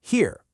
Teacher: That sharp h at the beginning and the long e sound really travel